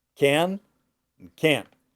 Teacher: They both have the same sound. It's that American AN sound. It's very nasal.